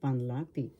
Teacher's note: The accent is in the second syllable.